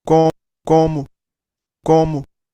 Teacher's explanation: Primero, una vocal O nasalizada y segundo, una O al final que se vuelve U.